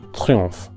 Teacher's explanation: De nuevo en la preposición de tenemos al sonido E como en le, y en la palabra triomphe, la combinación tr como en notre, seguida por una vocal nasal, el sonido on, que es como la O del español más cerrada y nasalizada